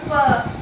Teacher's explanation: हमारे ओठ आपस में टकराती है, इसका हमने ओष्ठ नाम रखा है